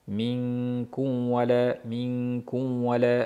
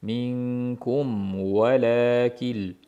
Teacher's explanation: mimni yaxshilab bildirib labimiz yumib keyin vovga